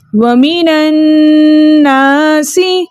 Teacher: حمزۃ الوصل درمیانی کلام میں آنے کی وجہ سے حذف ہو گیا، اور نون مشدد میں چھپا نون ساکن کو ہم نے نون مفتوحہ سے ملا کر پڑھا، یعنی زبر والے نون سے ملا کر پڑھا۔